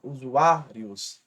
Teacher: a penúltima é mais forte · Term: paroxítona